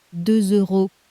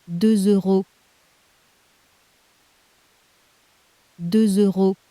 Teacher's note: Listen to 2 euros and catch the little Z gluing the words together. 2 euros On paper that S at the end is silent, but in front of a vowel it wakes up as a Z. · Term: liaison